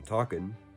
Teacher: dropping the G in ing words, which causes talking to become talkin'